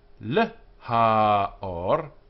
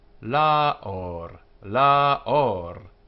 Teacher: And to the light would be le-ha-or. But the article h disappears, and we end up with la-or. La-or. The hey of the article being dropped out.